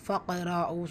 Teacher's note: காஃப் கல்கலாவுடைய எழுத்து, கல்கலா சுகுரா இடையே வந்திருக்கனால சிறிதாக அசைச்சு ஓதுனால் போதுமானது. ரா ஃபத்தா பேச்சு வந்திருக்கு, வல்லினமாக ஓதணும்.